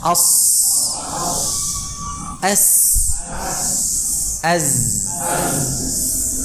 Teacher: Kalau tadi di atas, sekarang di bawah. Ya, ujung lidahnya menempelnya ke bawah, ya, ke dinding dalam, bagian dari dinding dalam, ya, dari gigi seri bawah. Suara itu mengalir di atasnya gigi seri bawah, ya.